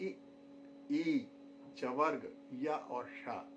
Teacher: दूसरे नंबर पर है इचू यशास तालव्याम, अर्थात इ, ई, चवर्ग, य और श ये ध्वनियाँ हमें तालव्य से प्राप्त होती हैं